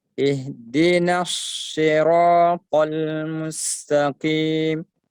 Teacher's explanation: Ha, huruf hamas. Dibaca mengalir dan bersambung.